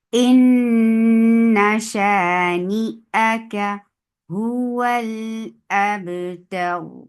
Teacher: Because of this waqf, you are giving sukoon on raw. This sukoon will make raw heavy, and it was heavy before them too. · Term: raw will be heavy